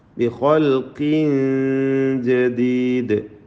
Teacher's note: തൻവീനിനെ ഇഖ്ഫാ ഹഖീഖി നൽകി മറച്ചു മണിച്ചോതുക